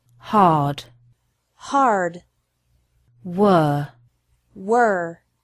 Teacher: of the letter R is also a little bit different the R is pronounced stronger in American English